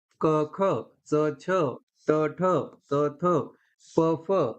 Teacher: यांनाच श्वास असं सुद्धा म्हणतात श्वास वर्ण किंवा व्यंजने आणि त्याचबरोबर यांना अघोष वर्ण सुद्धा म्हणतात